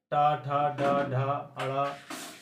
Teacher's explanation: ये आपके मूर्धन्य से यानी मुख से उत्पन्न होते हैं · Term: ट वर्ग